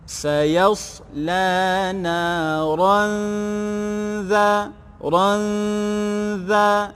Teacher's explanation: Sayaslana ranza, dengungkan, tanwin bertemu dengan zal, ikhfa hakiki, dengungkan.